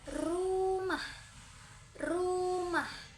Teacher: Cara pengucapannya ujung lidah disentuhkan dan digetarkan secara berulang-ulang dengan cepat pada gusi dan pita suara yang bergetar.